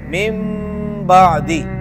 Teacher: نون ساکن اور تنوین کو ہم نے میم سے بدل دیا، من بعدی، اس کو کہتے ہیں اقلاب۔